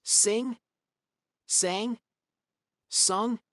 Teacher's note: The first one's my tongue is up higher, and as I say each word, I feel my tongue getting lower and lower. The last one has the sound almost in my neck instead of in my mouth. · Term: vowel change